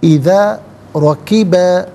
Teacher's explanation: رکبہ میں را پر زبر ہے، را کو پر کر کے پڑھا جائے گا